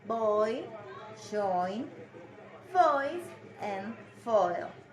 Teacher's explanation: the first part of the diphthong is the vowel found in count and born before gliding to the front closed position